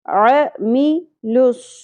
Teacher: عین کی زبر زیادہ نہیں کھینچنی، عین اور میم پہ سنگل سنگل حرکات ہیں، زیادہ نہیں کھینچنی.